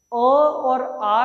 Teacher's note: अ और आ का जो उच्चारण स्थान है वह क्या है, कंठ है।